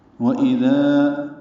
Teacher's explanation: وَإِذَا ہونٹوں کی ناتمام گلائی سے حمزہ واضح طور پر ادا کرنا ہے، دال کو نرمی سے پڑھنا ہے اور الف مدہ ہے، 2 حرکات لمبا کرنا ہے